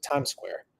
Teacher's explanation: A palavra termina com S e a próxima começa com S. Então a gente vai conectar as duas e ficar Times Square, como se fosse uma só. You connect both words and you say Times Square.